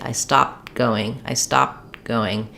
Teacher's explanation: It breaks the flow a little bit. If I'm speaking fluently and the context will tell you whether or not it's a past tense, I might swallow that t slightly.